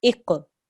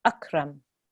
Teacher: When we have a qaf, that's a qalqala letter, so we make a jerk there.